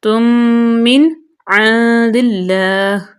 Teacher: نون کے بعد عین ہے یہاں پہ اظہار